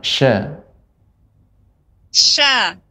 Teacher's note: huruf syinnya lebih diperbanyak lagi Ibu tafasyinya